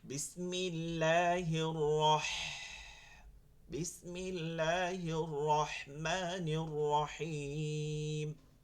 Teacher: লম্বা হা, এটা হালকা আওয়াজ হবে, কোনো গম্ভীর আওয়াজ হইতে পারবে না